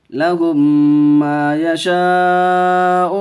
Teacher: یہاں مد متصل کا قاعدہ، 4 الف کھینچ کے پڑھیں گے. واو ساکن سے پہلے پیش ہے، واو مدہ کا قاعدہ.